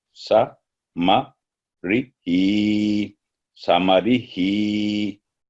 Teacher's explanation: हा के नीचे खड़ी जेर है, इसलिए 2 सेकंड ही की आवाज होगी